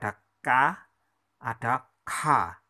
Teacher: Kantya ini adalah aksara yang bunyinya keluar dari tenggorokan